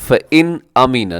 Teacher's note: فَإِنْ أَمِنَ بَعْضُكُمْ، فَإِنْ أَمِنَ نون ساکن ہے، نون ساکن کے بعد حمزہ ہے، فَإِنْ أَمِنَ نون ساکن کے بعد حمزہ، تو یہاں اظہار ہوگا، غنہ نہیں ہوگا